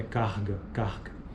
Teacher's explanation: Pronúncia típica do dialeto carioca, ocorre fricção audível na região velar